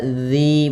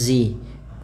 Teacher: Ujung lidah kita menempel dengan gigi seri atas, ya, sehingga dia terbaca zi bukan lagi zi.